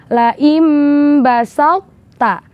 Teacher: tho tanpa mengeluarkan sifat qalqalahnya huruf tho dan langsung memasukkannya ke huruf ta